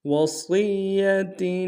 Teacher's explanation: من بعد وصیۃ، وصیہ میں صاد کو یا کے سامنے لانا ہے، صاد کو موٹا ادا کریں گے، یا کے اوپر تشدید زور دیں گے، اور تا کے نیچے تنوین غنہ کریں گے۔